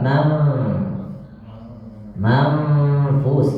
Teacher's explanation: itu namanya ikhfa memasukkan ke dalam huruf Fa